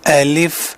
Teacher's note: اس کا نام پکارتے ہوئے آپ کو اپنی زبان لام اور فا کے مخرج کی طرف جاتی محسوس ہوتی ہے